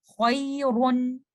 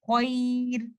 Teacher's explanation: سٹاپنگ کے کیس میں میں را کو ترقیق کے ساتھ یا لائٹ پڑھوں گی